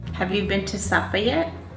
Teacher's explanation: Americans tend to have a steady rise.